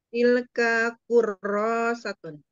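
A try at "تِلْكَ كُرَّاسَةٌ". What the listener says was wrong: Jadi berhentinya jangan jangan apa ya? Manfaatkan sukun ya di lam supaya tidak kejeletot di kap. Tilka. Daripada tilka, tilka, tilka.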